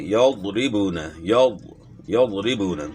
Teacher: ضاد کی آواز بہت موٹی اور نرم ہوتی ہے